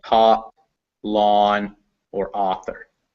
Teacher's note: it's almost always ah as in top lawn or author